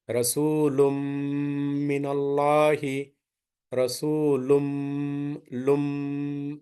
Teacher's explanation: You have to make the gunna of 2 units. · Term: idgham